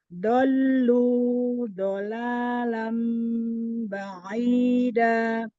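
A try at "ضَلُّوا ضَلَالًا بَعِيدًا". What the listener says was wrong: Kepanjangan. Dallunya kepanjangan.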